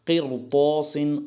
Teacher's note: یہاں پر بھی یہ را ساکن جو ہے یہ بھی پر پڑھا جائے گا کیونکہ اس کے بعد جو طا آیا ہے یہ حروف مستعلیہ میں سے ہے